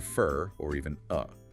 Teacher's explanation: For often reduces to fer or even uh.